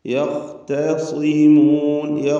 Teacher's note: സ്വാദിന് തഫ്ഖീമുണ്ട്, കുറഞ്ഞ തഫ്ഖീം മാത്രം, കിസ്റായതുകൊണ്ട്.